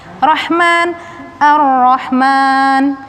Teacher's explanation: Yuridani rahman, ar-rahman, alif lam bertemu dengan huruf syamsiah, ra huruf syamsiah, lamnya tidak dibaca langsung masuk ke ra. Ar-rahman, ha kecil, suaranya bening